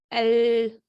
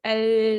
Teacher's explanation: तो क्या है, the way of air through the mouth, the way of air passes through the mouth, does not go in the usual way along the center of the tongue. The air escapes along the side of the tongue. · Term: लेटरल साउंड